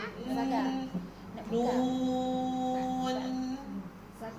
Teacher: Jadi lebih cantik bila kita nak matikan di hujung tu dia ada dengung asliah dia iaitu ghunah yang asli dia. Dia sekadar dengung yang yang sekejaplah nun.